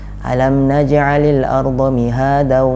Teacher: Alam naj'alil arda mihadan, kita dengungkan ke huruf waw, karena di sana terdapat tanwin fathatain bertemu dengan waw, jadi harus kita idghamkan kalau kita mau menyambung dari ayat yang pertama dengan ayat yang kedua. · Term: idgham bi gunnah